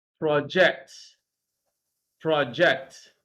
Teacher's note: when you are using it as a verb stress is on the second syllable